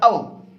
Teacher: औ का उच्चारण स्थान क्या है? कंठ और ओष्ठ। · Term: कंठोष्ठ